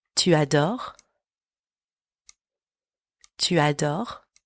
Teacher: don't pronounce the S at the end